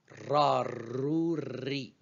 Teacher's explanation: Ra, c'est le R roulé. Ce n'est pas le R grasseyé, c'est le R roulé.